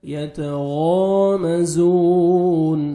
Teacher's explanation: زا کو زور سے پڑھیں گے اور 1 سیکنڈ کھینچیں گے